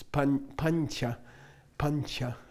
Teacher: the floating nasal before a cha would be the palatal one, which is pancha, pancha, okay?